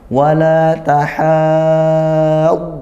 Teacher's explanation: Dibaca tebal juga, maka lidahnya naik sampai rongga mulutnya tertutup karena itbaq.